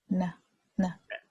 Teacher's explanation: N is also very much an alveolar consonant. If you look at the chart here one more time, see the N is here right behind the L, and it is the tip.